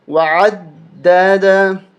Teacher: دال کے اوپر تشدید ہے، اس کو دبا کے اس پہ سختی کریں گے